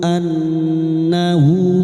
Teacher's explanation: nun yang bertasdid guna musyaddada kita dengungkan selama 3 harokat